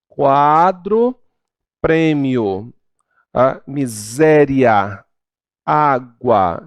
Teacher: Já o crescente, olha aí, ocorre um ditongo crescente quando há um crescimento no som, partindo de um som mais fraco, que é a semivogal, para um som mais forte, que é a vogal.